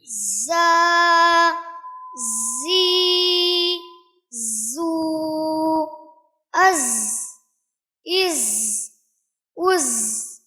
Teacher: जा का मखरज अदा करते वक्त इस चीज का ख्याल रखें कि इसको जाल से और इसी तरह से वो या वौद से नहीं बदलना है, बल्कि इसकी आवाज शहद की मक्खी की तरह, नहल की तरह इसकी आवाज होती है। जबान की नोक को सनाया उलिया और सुफला के दरमियान रखने के बाद हम इसको अदा करेंगे